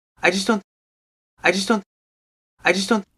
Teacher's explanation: T is dropped also the vowel in just hardly there